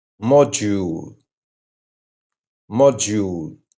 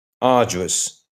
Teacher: When D meets certain vowel sounds, especially U and I, it often softens into that gentle J sound. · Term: soft J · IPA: /dʒ/